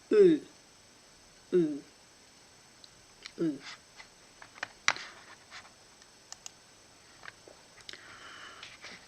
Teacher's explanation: The tip of the tongue is slightly raised and doesn't touch the lower teeth. The back of the tongue is raised high. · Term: sound U